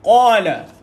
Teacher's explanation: Ingat dia bunyi isti'la ni huruf yang kita naikkan lidah kita. Kalau naik lidah tu semua isti'la.